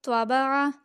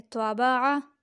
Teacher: اس تواں کو ہونٹوں کو گول کر کے ادا کریں گے